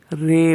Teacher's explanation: امالہ کا مطلب ہے زبر کو زیر کی طرف اور الف کو یا کی طرف مائل کر کے پڑھنا۔ امالہ کو اردو کے لفظ قطرے کی را کی طرح پڑھیں، یعنی ری نہیں بلکہ رے پڑھیں